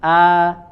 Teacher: Abu Amr ad-dani ya Beliau mengatakan fathah Arabiyah fathah mutawasitoh ya fathahnya Orang Arab itu adalah fathah Yang pertengahan ya Jadi tidak membuka aa ya sampai berlebihan atau tidak juga kurang dari kadarnya